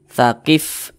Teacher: Karena huruf fa itu salah satu huruf yang memiliki sifat hams.